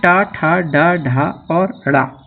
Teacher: मूर्धन्य जो मूर्धा से उच्चारित वर्ण होते हैं उन्हें मूर्धन्य कहा जाता है